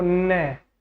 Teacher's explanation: नाक और मुंह की हेल्प से बोला जाता है जैसे आप बोलक देखो न तो यहां पर नाक का यूज · आपका पंचमाक्षर है यह नाक और मुंह से बोला जाता है